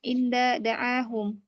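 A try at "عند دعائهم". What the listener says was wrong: Itu ada hamzanya ya.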